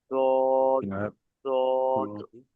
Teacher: উপরের মাড়ির দাঁতের গোড়া, মাড়ি এবং দাঁতের গোড়া অ্যাডজাস্ট হয়ে উচ্চারিত হবে